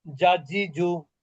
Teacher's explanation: জিমটা জিহ্বার মধ্যভাগ থেকে উচ্চারিত হয়, ওই বরাবর উপরের তালু